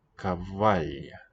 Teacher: Cavall, with the palatal double letter L.